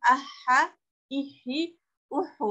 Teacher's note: Ada tasydid di huruf H, maka H-nya dibaca double, dua ya.